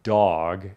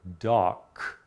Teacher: is voiced consonants at the ends of words so for example the word dog has a voice consonant versus the word doc which has a voiceless consonant